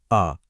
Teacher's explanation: जीभ बिल्कुल रिलैक्स्ड है। एकदम बीच में ना आगे ना पीछे बिल्कुल सेंट्रल। यही तो मध्य स्वर की खासियत है।